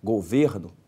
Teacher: Governo é uma paroxítona, a sílaba tônica é o ver.